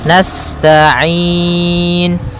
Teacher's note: sifat sinnya sempurnakan dengan mengalirkan nafasnya